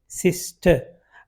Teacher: लेकिन आर जो है ब्रिटिश इंग्लिश में नहीं बोला जाता